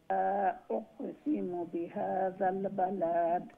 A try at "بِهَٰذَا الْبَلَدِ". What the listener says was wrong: বালাদ এন্ডে দি লম্বা করার কিছু নাই, তাড়াতাড়ি আর দালোর উপরে কালকালা বিহাদাল বালাদ বালাদ বালাদ লা লম্বা নাই বিহাদাল বালাদ বালাদ ওমলা খান